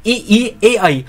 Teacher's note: मध्य में केवल आ है, अग्र में ई ए आई, आप यहां पे उच्चारण करो ना ई ए आई तो आपकी जीभ आगे आएगी, तो ई ए आई अग्र में है